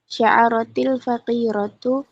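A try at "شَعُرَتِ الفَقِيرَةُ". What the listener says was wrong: Itu salah ya, bukan sya'ara. Kalau sya'ara nanti artinya membuat syair. Seharusnya gimana? Sya'ura. Aitnya di dhammahkan kalau mau berarti merasa. Sya'ura, merasa. Tapi kalau Anda tulis sya'ara, lihat, cuman beda harokat, maknanya beda. Kalau sya'ara artinya membuat syair, membuat puisi. Tapi kalau sya'ura, merasakan sesuatu.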